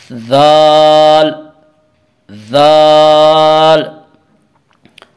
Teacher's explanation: زبان کی نوک جب ثنایا علیہ کے کناروں سے ٹکراتی ہے تو سا ادا ہوتا ہے، ذال ادا ہوتا ہے